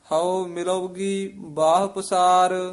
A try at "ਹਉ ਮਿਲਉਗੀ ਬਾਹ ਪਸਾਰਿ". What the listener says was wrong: ਮਿਲੋਗੀ ਨਹੀਂ ਕਹਿਣਾ। ਮਿਲੋ ਦੇ ਵਿੱਚ ਡੈਸ਼ ਦੇ ਕੇ ਗੀ ਨਾਲ ਉਚਾਰਨ ਕਰਨਾ ਹੈ। ਪਾਠ ਇਕੱਠਾ ਹੀ ਹੈ।